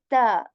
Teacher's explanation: tip of the tongue it touches the back of your upper teeth and you say t this is a light letter